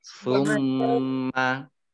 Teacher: mimnya dibaca mendengung, gunnah, ada tasdidnya ya ditahan